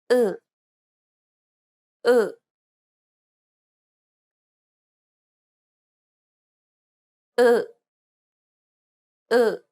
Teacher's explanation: This vowel doesn't exist in English. To pronounce this sound, first try to pronounce the U in true. From there, try to unround and spread your lips.